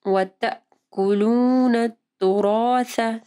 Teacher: پڑھنا ہے، طعام المسکین۔ وَتَأْكُلُونَ التُّرَاثَ، وَتَأْكُلُونَ نہیں پڑھنا، یہ دیکھیں الف کے اوپر حمزہ ہے، پھر حمزہ کے اوپر سکون ہے، تو ہم لوگ حمزہ کو پڑھیں گے، ایک جھٹکا سا دینا ہے · جب آپ سا پڑھیں گے تو آپ کی زبان کی نوک اوپر کے 2 دانتوں کے پاس آئے گی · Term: سا کے مخرج